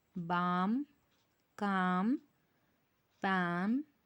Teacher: Notice that we do not pronounce the letter L in any of these words. The letter L is silent in all these words.